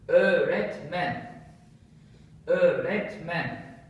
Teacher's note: So it's like double vowel instead of one vowel. So that's the function of yumuşak G.